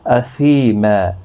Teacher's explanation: یا مدہ ہے، ایک الف کی مقدار کے برابر کھینچیں گے · دو زبر کو بدل کر ایک زبر کے ساتھ وقف کریں گے، ایک الف کی مقدار کے برابر کھینچ کر وقف کریں گے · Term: وقف بالابدال